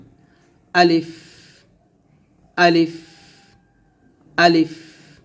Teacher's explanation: আলিফ আলিফ আলিফ আলিফ যখন উচ্চারণ করবেন আলিফ টান দেওয়া যাবে না আলিফটা তাড়াতাড়ি উচ্চারণ করতে হবে